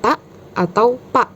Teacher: glottal stop atau bunyi konsonan yang dihasilkan dengan menutup sementara pita suara atau glotis sehingga aliran udara terhenti, kemudian membuka kembali glotis untuk melepaskan udara dengan cepat.